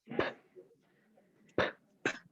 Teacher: It is a bilabial sound. It means that the 2 lips, the upper and the lower, are involved